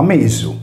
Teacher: si leggeva invece come una S sonora, articolata negli alveoli in modo fricativo